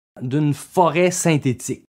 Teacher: La première concerne l'affrication de T et de D devant I et U, ce qui signifie que la pointe de la langue ne se détache que progressivement des alvéoles, d'où un bruit de friction entre le bruit de l'explosion et le timbre pur de la voyelle.